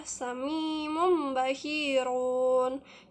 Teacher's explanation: Dalam bacaan ini nun mati atau tanwin berubah menjadi bunyi mim. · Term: iqlab